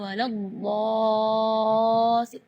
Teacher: Mad di situ kita harus panjang membacanya 6 harakat, karena di situ hukumnya mad lazim kalimi musaqqal.